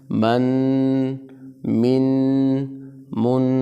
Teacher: اس غنہ کو آپ نے ایک الف کے برابر اس ناک میں آپ نے اس کو رکوانا بھی ہے تاکہ غنہ ظاہر ہو جائے